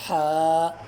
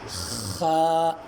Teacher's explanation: ہا کو پڑھتے وقت آواز گلے کے درمیان سے نکالنا ہے، اور خا کو ادا کرتے وقت گلے کے شروع والے حصے سے آواز نکالنی چاہیے